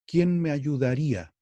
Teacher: y tiene siete sílabas pero seis golpes si ustedes se fijan entre la sílaba me y la sílaba a que es la la primera sílaba de la palabra ayudaría se hace un efecto fonético que golpea en una sola sílaba dos sílabas juntas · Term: sinalefa